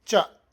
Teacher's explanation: ಇಲ್ಲಿ ಸಿ ಎಚ್ನ ಚ ಉಂಟು, ಅಂದರೆ ಎಚ್ ಉಂಟು. ಎಚ್ ಇದ್ರೂ ಆ ಮಹಾಪ್ರಾಣದ ಸಿ ಎಚ್ ಅಲ್ಲ, ಇದು ಅಲ್ಪ ಪ್ರಾಣದ್ದೇ ಎಚ್.